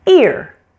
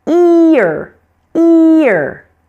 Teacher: The word is one syllable but it almost stretches into two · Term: R controlled vowels